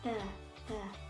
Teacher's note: dari ujung lidah beserta pangkal gigi depan sebelah atas dan menekan langit-langit keluar huruf to, dal, dan ta